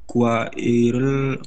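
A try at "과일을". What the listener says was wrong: Kuairel ya. kuairel, digabung aja, santai aja. Jadi jangan dipisah-pisah, jangan kuairel.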